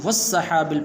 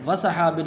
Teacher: سین کے اوپر شد ہے تو والسحاب پڑھنا ہے وسحاب نہیں سین کو مشدد پڑھنا ہے